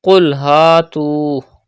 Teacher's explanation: Pronounce qaf with thicker voice and stretch alif madda and waw madda.